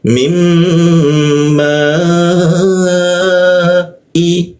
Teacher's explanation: Alif bertemu hamzah muncul bendera kita panjangkan tiga ketukan di huruf manya. Mim bertasdid kita tahan dua ketukan.